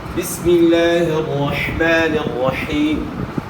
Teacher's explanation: گلے کے درمیان سے ہا کی آواز ادا کرنی ہے۔ اس کے علاوہ پھر آپ نے شد کا بھی خیال کرنا ہے۔